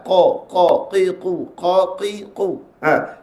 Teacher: Mana nak letak dia ke atas langit-langit lembut dekat dengan anak tekak. Kalau kita rasa hujung lidah kita dengan langit lembut yang masuk ke dalam, dia bunyi ke dalam. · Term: huruf qaf